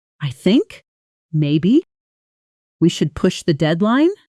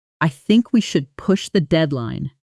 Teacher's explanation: When we say something assertively in English, our intonation tends to stay flatter and more controlled, not rising nervously at the end like a question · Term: assertive controlled intonation, controlled intonation